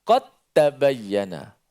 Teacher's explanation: Tapi oleh kerana sini berlaku secara idgham, maka dal tu dimasuk ke dalam ta, tapi secara kamil, masuk secara sempurna. Sifat dan makhraj dal masuk semua dalam ta. Tak bunyi langsung suara dal. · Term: idgham kamil